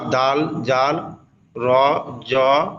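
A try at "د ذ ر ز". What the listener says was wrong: র কেন? যা, রটা তো অন্য অক্ষরে যাবে।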